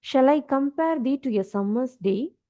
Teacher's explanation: unstressed syllable followed by stressed syllable, unstressed syllable, stressed syllable, unstressed syllable, stressed syllable